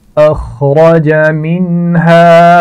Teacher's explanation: اخرج خا اور را دونوں کو موٹا پڑھا جائے گا